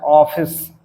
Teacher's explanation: यह ध्वनि आ और ओ के मध्यवर्ती ध्वनि होती है। ये इसको एक आगत स्वर कहा जाता है।